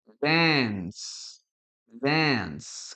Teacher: Y fíjate la pronunciación, no es ni una A, yo no digo dance, ni tampoco digo dance, ¿no? Esto es una combinación entre una A y una E, ¿ok? Dance, dance, como que si la A y la E se fusionaron, ¿no?